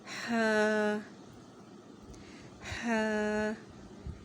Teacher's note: ہا جو ہے اس کا مخرج یہ ہوگا کہ یہ حلق کے درمیانی حصے سے ادا ہوگا، اور اس کی صفت بھی باریک ہے، ہا، ہا۔